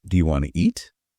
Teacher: Yeah, it's where words, they blend. Sounds might disappear. Like the T in want to, it just vanishes. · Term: connected speech